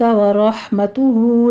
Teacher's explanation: حلق سے ادا کرنا ہے، آگے یا لین ہے، ورحمتہ میں را مفخم پڑھی جائے گی، ہا کو وسط حلق سے ادا کرنا ہے ، باریک ورح نہیں کہنا، ورحمتہ ہو میں مد صلہ صغرا